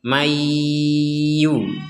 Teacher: Jadi, nun sukun dimasukkan ke ya, maka dibacanya mayyu. Sekali lagi mayyu ini plus dengung ya.